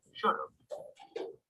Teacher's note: When we use the auxiliary have after a modal, we pronounce the two words together. The word have loses its sound and is linked to the modal before it.